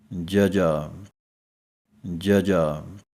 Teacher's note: 35 ਅੱਖਰਾਂ ਵਾਲਾ ਅੱਖਰ ਹੈ ਜਜਾ ਇਹ ਹੈ ਜਜਾ ਪੋਲਾ ਜਿਹਾ ਇਹਦਾ ਉਚਾਰਨ ਕਰਨ ਲੱਗਿਆਂ ਦੰਦ ਅਤੇ ਜੀਭ ਦੇ ਵਿੱਚ ਹਵਾ ਜਿਹੜੀ ਹੈ ਰੁਕ ਕੇ ਉਚਾਰਨ ਨਿਕਲਣਾ ਹੈ